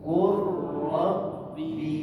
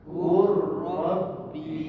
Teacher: Baik, sama-sama tuan-tuan, kita baca bacaan kalimah ini secara idgham, memasukkan huruf lam yang mati ke dalam huruf yang berbaris. Huruf yang berbaris adalah huruf ra.